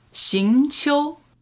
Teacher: Second tone and then first tone.